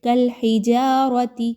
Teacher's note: جیم الف زبر جا، الف مدہ ہے، 2 حرکات کے برابر اس کو پڑھیں گے۔ را کے اوپر چونکہ زبر آ گئی ہے اس لیے اس را کو پر پڑھا جا رہا ہے، موٹا کر کے پڑھنا ہے، باریک نہیں پڑھنا